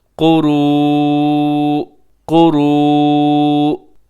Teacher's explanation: قاف موٹا ہے، را بھی موٹا پڑا جائے گا، اور اس کے اوپر جو مد ہے اسے مد متصل کہا جاتا ہے۔ · آپ جب وقف کریں گے تو آخر میں حمزہ کو ساکن کر دیں گے